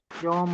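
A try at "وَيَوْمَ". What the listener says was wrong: वाव भी साथ लगा।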